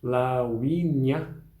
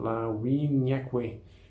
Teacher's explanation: Esse lauinia, o I precisa necessariamente ter um som consonantal, como se fosse um J